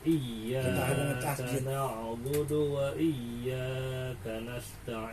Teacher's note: di a dia Iya i harus dimasukin ke huruf ya Iya jadi seakan-akan y-nya ada dua gitu